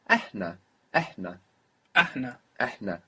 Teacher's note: The H sound from Habibi. Good. Good. That breathy H.